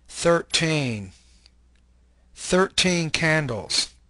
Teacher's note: The answer, the second syllable. Rule, stress the teen part of the number